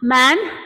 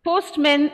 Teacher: the letter a now changes to the schwa sound